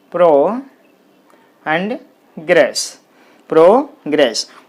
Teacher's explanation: There are 2 syllables in this word, pro and gress, progress. Progress is a noun, so the stress is on the first syllable.